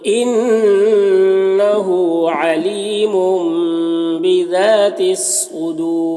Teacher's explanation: तनवीन के बाद यहाँ पर बा है तो तनवीन को मीम से बदलकर गुन्ना और इख्फा के साथ पढ़ेंगे, इसको इक़लाब कहते हैं।